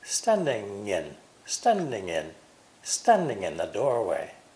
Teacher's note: and again we find the ng linking